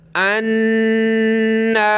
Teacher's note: نون پہ کھڑا زبر ہے اوپر کی طرف اور تشدید سخت کریں گے، غنہ کریں گے اور اوپر کھینچیں گے. انا، اس یا کو نہیں پڑھیں گے.